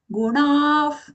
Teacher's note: it is a cerebral letter. So we have to roll our tongue.